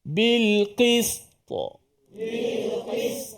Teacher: Qalqalah ni bukan baris dia hanya pantulan saja dia mati kan